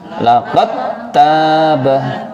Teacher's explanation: Ini qalqalahnya sekarang dihilangkan. Dal itu kan punya qalqalah, namun karena bertemu tak, maka qalqalahnya dihilangkan menjadi laqad tabah. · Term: idgham mutajanisain